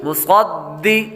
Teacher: آگے دال حروف قلقلہ میں سے آ رہا ہے، اس لیے قلقلہ کریں گے. آگے قاف قاف حروف مستعلیہ میں سے ہے، اس لیے اس کو پر پڑھیں گے.